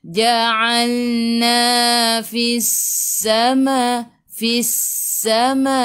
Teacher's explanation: Terus tekan ke dalam sin. Sin sifat hurufnya safir. Kena bunyikan.